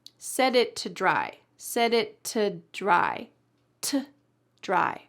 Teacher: I'm not even saying the O, just to dry. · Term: reduced